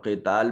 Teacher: قتال میں قاف کو مفخم ادا کریں گے، صفت استعلاء ہے